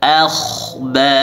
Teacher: huruf kha sukun, sebelumnya fathah dibaca tebal. Akhba, ba 2 harakat, ra berbaris fathah dibaca tebal, ha juga 2 harakat.